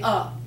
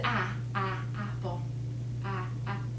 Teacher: There are open A's that aren't accented, so they turn to schwa.